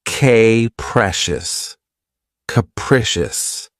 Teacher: This word has three syllables and the stress is on the second syllable. Keep in mind that the first syllable has that schwa sound